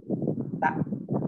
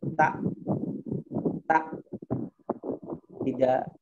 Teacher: Naam, diberikan pada makhrajnya yang dimana kepala lidahnya ra'sul lisan ditempelkan ke gusi. Gusinya itu di bawah mendekati gigi.